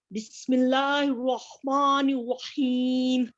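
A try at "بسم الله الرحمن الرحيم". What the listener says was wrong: Sister हा के मखारिज को इतना मोटा नहीं करना. बिस्मिल्लाहिर रहमानिर रहीम. हा को मोटा नहीं अदा करना, बारीक है.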